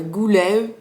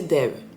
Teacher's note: les terminaisons du pluriel en ou à Groix sera dit Ev. La lumière goulev, c'est aussi valable par exemple pour le chiffre 2 qui est prononcé dev.